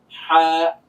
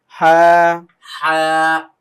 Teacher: গলা থেকে একটা চাপ দিয়ে হালকা একটা বাতাস বের হচ্ছে